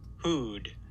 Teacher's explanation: So this vowel has a low F1 and a relatively low F2.